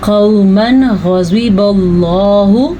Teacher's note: नून तनवीन के बाद गैन आ गया है हरूफ हल्की में से, तो यहाँ पे इजहार का कायदा होगा